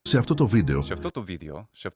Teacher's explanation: You also get here characteristics of the pronunciation that the spelling wouldn't necessarily indicate to you, like retracted S. Modern Greek has an apical or retracted S sound. It sounds further back.